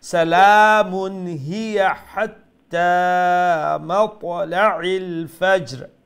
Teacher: এই হাত্তার হা গলা থেকে মিডল থেকে উচ্চারণ করবা